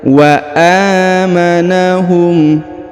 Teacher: huruf a dipanjangkan 2 harokat karena di atasnya terdapat tanda alif kecil ya. Wa amanahum min khauf, perhatikan, wa amanahum.